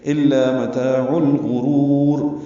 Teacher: لام ساکن پہ اظہار قمری، غین پر، را پر، اور را کو لمبا کریں گے وقفاً تو دوسری را بھی پر ہو جائے گی. · عین کو لام سے ملا دیں گے.